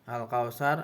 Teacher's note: Al-Qamariyah karena huruf lam alif bertemu dengan huruf kaf, cara baca harus terang dan jelas.